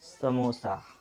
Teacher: इसको बोलते समय हमारा जो जीभ है वो दांतों को स्पर्श करेगा, जैसे समोसा। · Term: दंत स